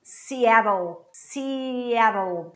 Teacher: TT becomes R, so I say Seattle, and then I finish the word in L.